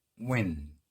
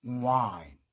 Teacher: 자, 그 다음 W, W, W, W라고 하는 사람도 있는데 그렇지 않습니다. 이 W가 갖고 있는 음가는요, 또 우워, 이걸 한 음절로 발음하니까